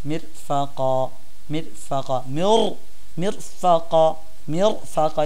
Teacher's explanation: যেমন দেখেন মিরফাকা, র দেখেন সাকিন, এর পূর্বে জের আছে, র সাকিন তার পূর্বে জের, তো এটাকে আমরা পাতলা করে পড়ব।